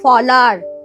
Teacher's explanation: এই যে হটা লোপ পেয়ে গেল, এখানে নেই, হটা লোপ পেয়েছে। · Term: হ লোপ